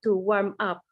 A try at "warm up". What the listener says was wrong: Aunque lo despegaste, pues, warm up. Te da miedo ahí pegarlo. Warm up.